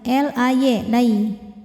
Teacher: Lai ada harfulin atau huruf lin. Karena ada ya sukun didahului baris fathah, maka dibacanya lembut atau lunak ya.